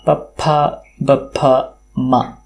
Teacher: पुनः पप्फ, बभ म तत्र जिह्वायाः स्पर्शः यद्यपि न भवति तत्र ओष्ठयोः स्पर्शः भवति इति स्वीक्रियते। · ಜಿಹುವಾಯಹ ಸ್ಪರ್ಶ ಯದ್ಯಪಿ ನಾ ಭವತಿ ತತ್ರ ಓಷ್ಟಯೋಹ ಸ್ಪರ್ಶಹ ಭವತಿ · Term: पवर्ग्याः